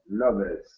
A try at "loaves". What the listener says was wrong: Don't pronounce the E. Loaves. Loaves.